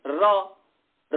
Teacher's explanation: र र का उच्चारण करते हैं तो दांत के ठीक ऊपर स्पर्श होता है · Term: मूर्धा